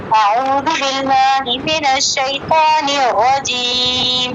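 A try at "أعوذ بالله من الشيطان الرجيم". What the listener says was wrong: نیراجیم نہیں بیٹا، نیراجیم، نیراجیم پڑھتے ہیں آپ نے، تشدید پہ جماؤ نہیں آپ کا. نیراجیم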